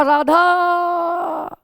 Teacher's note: आ स्वर को 2 मात्रा तक उच्चारित करना चाहिए था, लेकिन हम 2 मात्रा से अधिक उच्चारित किए हैं, तो इस वजह से हम अभी इस राधा में जो आ लंबा खींचा है इसको हम कहेंगे प्लुत स्वर।